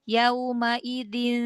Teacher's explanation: Yaumaidin masih ada huruf nunnya terdengar ya. Jadi jangan hilang sama sekali.